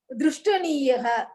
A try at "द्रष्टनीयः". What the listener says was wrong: द्रष्टनीयः. द्रष्ट द्रष्ट ஏன்னா நீங்க திருஷ்டன்னு போட்டேன்னா நீங்க ஸ்பெல்லிங்ல கீழே ரிக்காரா போட்டுருவேன். திருஷ்ட போட்டாதான் ர போடுவேன்.